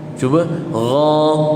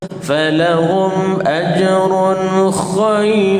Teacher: ghain dengan kha sama makhraj tuan-tuan, sama makhraj. Cumanya perlu elakkan, jangan terbunyi kha dekat ghain. Sebab ada orang yang baca ghain ada bunyi kha.